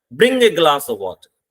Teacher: आप किसी को फिर कमांड दे रहे हो, ऑर्डर दे रहे हो कि 1 गिलास पानी लाओ, तो आप क्या कहते हो, ब्रिंग ए ग्लास ऑफ वाटर. अब देखो वाटर तक आते हुए हमारी आवाज डाउन हो चुकी है. हमने सेंटेंस जोर से शुरू करते हैं क्योंकि ऑर्डर दे रहे हैं. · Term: फॉलिंग टोन